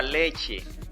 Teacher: su sílaba fuerte es la penúltima pero no se puede tildar porque termina en vocal Igual pasa